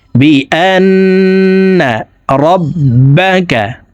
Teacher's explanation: ইয়াউমাইযিন তুহাদ্দিসু, তুহাদ্দিসু আখবারাহা, أخبارها، تحدث أخبارها يومئذ، تحدث أخبارها بأن ربك، বি আন্না, আন এখানে ওয়াজিব গুন্না। হরকতের বামে নুনে মিমে তাসদিদ হইলে সর্ব অবস্থায় নাকের বাসি থেকে গুন্নাহ করিয়া পড়িতে হয়। 3 সেকেন্ড পরিমাণ গুন্নাহ করে পড়ব,